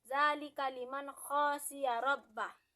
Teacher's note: Di sana nun mati bertemu dengan kha, maka dibaca dengan jelas. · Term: izhar